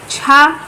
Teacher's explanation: छा तालव्य, स्पर्श संघर्षी है, महाप्राण है, आघोष है।